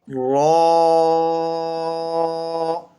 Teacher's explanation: را جو ہے یہ حروف مستعلیہ میں سے را ہے، اس کو آپ نے موٹا کر کے پڑھنا ہے۔ یہ 2 حالتوں میں جو عموماً 2 حالتیں ہوتی ہیں اس میں یہ موٹا پڑھا جاتا ہے۔